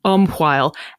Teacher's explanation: that QUH actually shows up in a lot of Scottish words and always signifies a very breathy hua sound